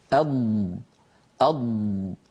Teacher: أض، فلما ينقفل الهواء الخارج من القصبة الهوائية يدفع اللسان ويصير خلف اللسان هنا هواء ضاغط، قوة ضاغطة، فيضغط اللسان، يضغط الهواء اللسان قليلا إلى الأمام، فيندفع اللسان تحت تأثير الهواء الضاغط قليلا إلى الأمام، إلى أن يعني يصل رأسه، منتهى رأسه، إلى منطقة التقاء اللحم بالأسنان من الداخل، لحم اللثة من الداخل. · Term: حرف الضاد